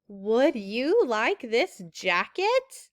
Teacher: I'm doing something funny with my voice there I kind of make it go up at the end